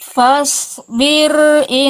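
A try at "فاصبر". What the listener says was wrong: Tebalkan lagi shotnya. Fa-nya tipis, so-nya tebal.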